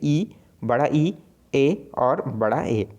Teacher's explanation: जीवा के जो आगे भाग में से उच्चारित होने वाले जो स्वर हैं वो क्या कहलाएंगे, अग्र स्वर कहलाएंगे, जैसे ई, बड़ा ई, ए और बड़ा ए, ठीक है।